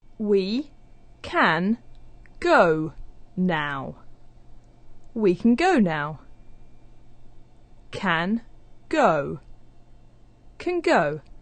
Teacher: For example, we can go, where the n sound at the end of the word can is starting to resemble the g sound at the beginning of go. So actually it sounds like the sound we have at the end of words like going and doing, the sound represented by ng. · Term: assimilated forms